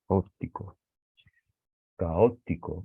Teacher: Aquí hay un hiato, dos palabras, hay dos vocales abiertas juntas, se separan, no se pronuncian en la misma sílaba, no es un diptongo, y se acentúa porque la palabra es esdrújula.